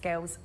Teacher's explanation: using that vocalized dark L on girls